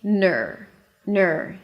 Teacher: So you see that from the N I shift directly to the R. My tongue pulls back to the R. My lips round as I pronounce the N.